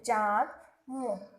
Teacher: जब इसे बोलते हैं तो नाक से ही इसका उच्चारण करते हैं। इसे चंद्रबिंदु की तरह इस तरह से लगा करके प्रदर्शित किया जाता है, जैसे चांद, मुंह। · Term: अनुनासिक